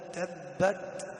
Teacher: والتاء ساكنة نعطيها همس بسيط